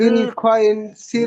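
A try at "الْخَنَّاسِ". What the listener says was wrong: না, বিল খুন, খ নুন খ নুন পেশ খুন, নুন জবর না, খুন নাসিল জাওয়ারিল কুন্নাস।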